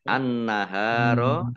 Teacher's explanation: langsung ke huruf berikutnya yaitu lam ditandai lamnya ada tasdidnya kemudianah Alif lamnya Alif Lam Syamsiah ya ditandai lamnya tidak dibaca langsung masuk ke huruf berikutnya yaitu Nun ditandai nunnya ada tasdidnya Nun tasdid ya dibaca gunah atau mendengung · Nun tasdid dibaca ghunah atau mendengung ditahan dua harakat